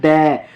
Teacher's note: द का आप में किसका प्रयोग होता है, दंत्य बोलते हैं ना, द। आपकी जीभ जो है, जब द बोलोगे ना, द, तो आपकी जीभ दांतों को टच करती है